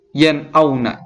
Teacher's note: Gimana cara membacanya jelas tanpa disertai dengan dengung